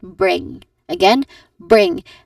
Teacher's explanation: It ends with a nasal sound, which is the ng sound